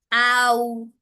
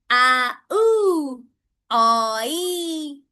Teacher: वो gliding sound है, उसमें दो साउंड मिक्स होके आता है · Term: diphthong